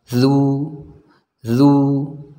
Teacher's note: harus kita manyunkan dengan dengan sempurna ya supaya dahnya jelas D Nah dalal ini diucapkan dari ujung lidah kita kita tempelkan ke ujung gigi seri yang atas ya lidahnya dikeluarkan sedikit kalau tidak dikeluarkan sedikit maka dalalnya tidak akan sempurna du D